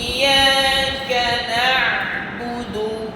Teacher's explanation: হামজা পাতলা এবং শক্ত, ইয়া আবার নরম, কাফ পাতলা